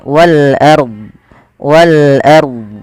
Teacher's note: ro tafkhim yaitu rnya dibaca dengan tebal